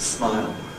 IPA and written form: smaɪl (smile)